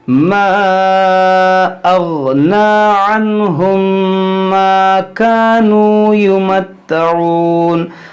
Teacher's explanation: میم ساکن کے بعد میم, یہاں پر ادغام شفوی ہوگا.